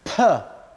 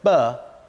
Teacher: aspiration is to do with air coming out per is aspirated but bur is not